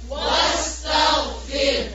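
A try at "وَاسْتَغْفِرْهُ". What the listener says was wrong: تا کو موٹا نہیں کرنا. فا کی زیر کو اور باریک کریں. طاغ نہیں ہے، طا نہیں ہے، تا ہے. فا کی زیر کو باریک کرنا، اس کو مارک کر لیں. تا کو موٹا نہیں کریں گے.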